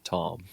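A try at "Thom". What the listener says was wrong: So, I think he just calls himself Tom. Why'd you stuff the H? Why'd you pronounce the H so hard?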